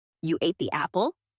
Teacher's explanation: apple question Rising intonation at the end you ate the apple emphasis on Apple higher pitch on Apple